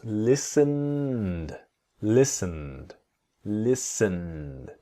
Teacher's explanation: So the T and E in listened are silent.